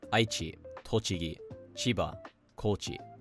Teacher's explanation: basically all prefectures with two or three mora use the atamadaka pattern when pronounced in isolation.